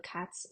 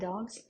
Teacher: Cat es sordo por eso hacemos s sorda dog es sonoro por eso hacemos Z como sonoro